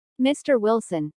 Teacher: notice the rising intonation on mr wilson which is used to address someone